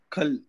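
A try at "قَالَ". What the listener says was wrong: இல்ல கால கா கிடையாது இன்னும் திக்கா சொல்லணும் கால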